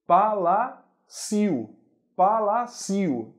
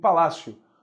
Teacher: O I é fraco. Como ele é fraco, eu já sei que é semivogal.